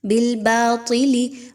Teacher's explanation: طا موٹا حرف ہے، اس کو موٹا کر کے پڑھا جائے گا، تا کی طرح نہیں پڑھنا۔ نیکسٹ لام کے نیچے جو زیر ہے اس کو بھی مجہول نہیں کرنا۔